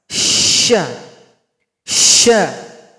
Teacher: Huruf shin tempat keluar atau makhrajnya ada di tengah lidah. Kita naikkan ke langit-langit. Posisi lidahnya lebih kurang seperti ini.